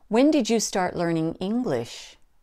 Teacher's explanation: important but the main stress is in the word English but we have to drop that last syllable to a lower pitch because it's a wh question · there's a slight emphasis in the first word because it's important but the main stress is in the word English but we have to drop that last syllable to a lower